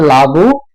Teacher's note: এই অলাবুর অটা যে উঠে গেছে লাবু হয়েছে সেটাই হচ্ছে সরলোপ